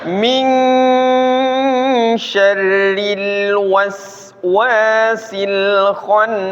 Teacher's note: Kha-nya ditambah tebal dikit lagi.